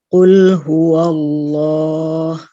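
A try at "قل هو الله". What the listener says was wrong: Bagus, Masya Allah.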